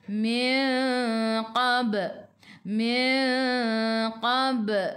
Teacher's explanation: Qab lantunannya kecil. Qalqalah sughra. · ikhfa hakiki dengan 2 harakat bawa ke sisi huruf qaf